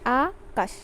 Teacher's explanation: আ একবার বলে থামছি তারপরে বলছি কাশ তাহলে আ যখন একবার বলছি আবার কাজ যখন আরেকবার বলছি তাহলে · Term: দুটো অক্ষর